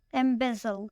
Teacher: This word has 3 syllables and the stress is on the second syllable. Embezzle. Embezzle means steal or to take money fraudulently.